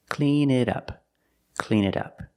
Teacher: The T in it sounds like a fast D.